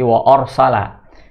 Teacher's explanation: rnya tebal ya ro sukun sebelumnya ada huruf berharakat fathah maka jadi tafkhim tafkhim itu tebal wa arsala hati-hati Anya terbawa tebal ke Ro Jadi Wa orsala